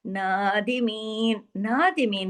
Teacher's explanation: नादिमीन पे हमने नून को अलिफ के बराबर खींचा, क्यों? क्योंकि उस पर एक खड़ी मद आपको नजर आ रही है, ये खड़ी मद अलिफ के बराबर खींची जाती है।